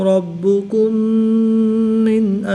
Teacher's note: میم ساکن کے بعد دوسری میم ہے تو یہاں پر ادغام شفوی ہوگا